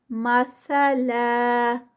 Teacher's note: इस तनवीन को हम अलिफ मद की तरह रोकते हैं 2 काउंट्स पे, तो यहाँ पर 2 काउंट्स पे रुकेंगे।